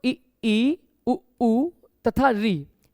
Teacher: समृत स्वर में ना के बराबर मुंह खुला होता है